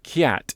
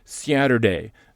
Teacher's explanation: you hear that in the northern cities vowel shift